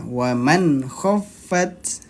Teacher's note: Nah, jadi bukan wa man. Nah, karena ini idhar halqi, dia dibacanya pendek, jelas dan pendek. 1 ketukan saja.